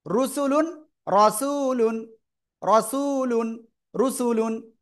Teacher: র হরফের উপরে জবর বা পেশ হলে র হরফ মোটা করে পড়তে হবে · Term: র মোটা